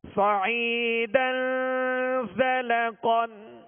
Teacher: قاف کو پر پڑھیں گے کیونکہ حروف مستعلیہ میں سے ہے